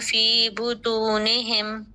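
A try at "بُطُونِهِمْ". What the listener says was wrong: طا کو موٹا کیجیے، آپ نے پڑھا ہے حروف مستعلیہ میں سے ہے بطونہم.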